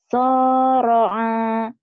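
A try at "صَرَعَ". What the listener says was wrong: kenapa panjang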